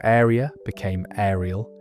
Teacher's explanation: It was a dialect that outsiders found puzzling and locals wore with pride marked by a feature almost unique in England, the Bristol L. This was an intrusive L sound added [music] to words ending in vowels.